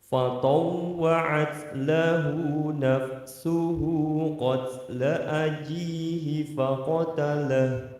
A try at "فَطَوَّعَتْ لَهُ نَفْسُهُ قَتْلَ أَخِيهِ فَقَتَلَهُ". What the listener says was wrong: ya, akhi, ada khonya ya.